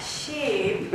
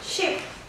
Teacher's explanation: the animal one, you need to make it long, like sheep. And the boat, we need to make it quick and short